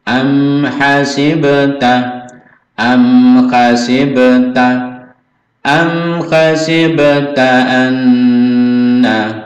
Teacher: am jangan terlalu lama ya, mim sukun bertemu ha idhar, syafawi